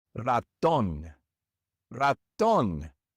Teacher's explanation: So, normally we would stress the second to last syllable. But in this word, we don't stress the second to last syllable. We stress the last one.